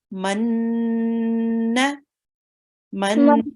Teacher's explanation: Okay, so this noon, you're correct. Noon here, we need to make the gunna because it has a shadda on top of it.